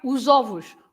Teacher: you pronounce Z, the S as Z, which is different from Spanish